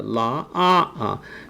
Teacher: Okay, la, it's a la, so you start with a lower pitch and then eventually you have a higher pitch towards the end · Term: rising tone